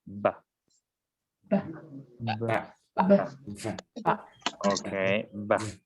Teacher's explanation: So the place of articulation is the same, right? It is a bilabial sound, but this time it is voice, right?